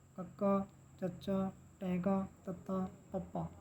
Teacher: ਇਸ ਤਰ੍ਹਾਂ 5 ਵਰਗਾਂ ਦੀ ਤਰਤੀਬ ਮੂੰਹ ਪੋਲ ਦੇ ਪਿੱਛੇ ਹਿੱਸੇ ਤੋਂ ਕਰਮਵਾਰ ਅੱਗੇ ਤੱਕ ਆਉਂਦੀ ਹੈ। ਜਿਵੇਂ ਸਭ ਤੋਂ ਪਿੱਛੇ ਕੰਠ ਹੈ, ਫਿਰ ਤਾਲੂ, ਫਿਰ ਜੀਭ, ਫਿਰ ਦੰਦ ਅਤੇ ਸਭ ਤੋਂ ਬਾਅਦ ਬੁੱਲ।